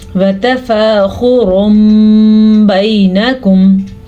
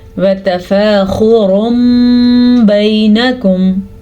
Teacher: ٹھیک ہے، نون ساکن یا میم نون تنوین کو، یہ دیکھیں چھوٹا سا میم نظر آ رہا ہے، میم میں بدل جائے دیں گے اور غنہ بھی کریں گے. اور تنوین کے بجائے پھر میم کی آواز آئے گی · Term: اقلاب